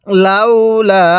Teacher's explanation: লাউ এর মধ্যে কিন্তু কোন প্রকার টান দিব না কিন্তু লামের মধ্যে এক আলিফ টান দিব